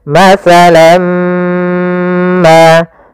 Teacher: caranya adalah kita tahan dulu mimnya. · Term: idgham bi gunnah